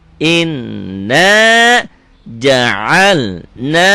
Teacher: Ingat kalau nun dan mim ada tanda gininya, dibacanya double, dengung ke hidung dan ditahan. Itulah gunnah.